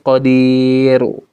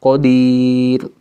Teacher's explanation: huruf ro di ujung, sebelumnya huruf ya berharokat sukun atau mati, maka cara bacanya tipis, bukan qadiru, tapi qadir.